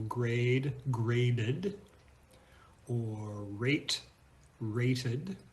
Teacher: the Ed sounds like uh plus d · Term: schwa plus de